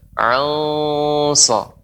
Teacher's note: nun sukun bertemu dengan shad, maka pembacaannya ikhfa, namun karena shad huruf isti'la, huruf tebal, ya, maka dia dibaca dengan tebal juga ikhfanya.